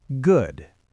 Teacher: It goes down and then scoops back up. · Your voice goes down and then immediately scoops back up on the exact same word. It sounds a bit like a wave. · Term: fall rise